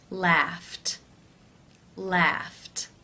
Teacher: the final sound of the infinitive is the unvoiced f sound since it's unvoiced it is case one where the e d is pronounced as the t t sound